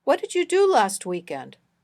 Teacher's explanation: emphasize do in the first line but you in the second emphasizing do is the usual pattern for this sentence if nothing in particular needs to be emphasized